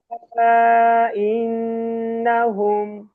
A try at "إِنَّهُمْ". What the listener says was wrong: না কিন্তু টান নাই, ঠিক আছে ভাই, নাতে টান নেই হ্যাঁ, ইন্না গুণা করতে হবে।